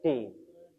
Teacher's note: kalau d ujung lidah kita menempel ke atas langit-langit